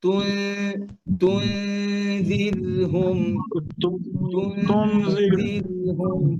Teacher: أم لم تنذرهم لا يؤمنون তুনজির, এই শব্দটা কিন্তু পাতলা, গুন্নাটা পাতলা, জাল পাতলা, নুন সুকুনের পরে জাল আসতে পাতলা হবে। তাহলে যেন গুন্না যেন মোটা না হয়, ঠোঁট গোল থাকবে না।